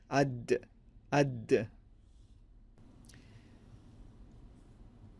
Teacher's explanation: Proper articulation at the makhraj, the tip of the tongue, and at the ridge of the gums or the beginning of the hard palate. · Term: the letter dal